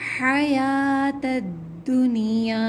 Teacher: حیات کا لفظ جو قرآن مجید کے اندر آتا ہے تو اس میں واو کو نہیں پڑھا جاتا